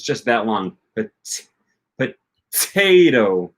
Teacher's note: flapping your tongue up to the top of your of your mouth and only hindering the airflow for just just a second